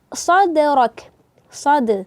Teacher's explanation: Ini qalqalah sughra, pantulannya tidak terlalu keras, dan pastikan jangan ada hamzah di situ, jangan sad, tapi sadrak, sad, jangan sad.